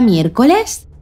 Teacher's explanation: Si os fijáis, su sílaba tónica es la antepenúltima. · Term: palabra esdrújula